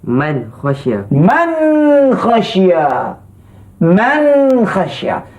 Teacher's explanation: Kita dapat dengar nun dibaca dengan terang, dengan nyata, dengan jelas. tanpa bunyi de tak dengung. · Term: hukum izhar, tanpa bunyi dengung